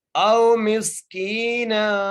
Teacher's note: میم کو سین سے ملائیں گے، سین کو سیٹی سے ادا کریں گے